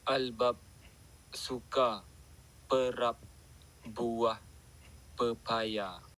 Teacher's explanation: bunyi plosif bersuara bilabial B di tengah dan akhir perkataan albab. TBN ialah garisan yang menunjukkan isyarat akustik ledakan mula bagi bunyi plosif.